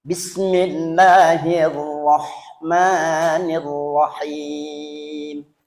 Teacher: Kalau di dalam Ar-Rahman, Ar-Rahim berarti tafhim. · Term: ro tafkhim tebal